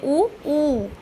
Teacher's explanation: ओठ जो है हमारे आगे वो गोल हो जाते हैं